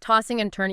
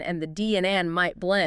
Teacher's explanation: You often drop the G sound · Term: G dropping